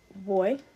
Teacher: you're about to put your lips together, but you still leave room for a little air to be able to escape, and that's called an approximant. So it's boy.